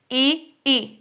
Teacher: फिर कुछ व्यंजन होते हैं कि जो तालु यानी तालव्य बोलते समय हमारी जीभ हमारे तालु को टच करती है